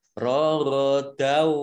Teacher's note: Idgham masuk bi dengan gunnah mendengung. Jadi masuk dengan mendengung. Mendengung wawu ya. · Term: idgham bi gunnah